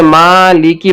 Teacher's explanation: لام اور کاف کے نیچے زیر ہے، اسے جلدی پڑھنا ہے، ذرا بھی نہیں کھینچنا ہے، اور معروف پڑھنا ہے، مجہول سے بچنا ہے۔ ماں لے کے یاؤ نہیں پڑھنا ہے بلکہ مالکی پڑھنا ہے۔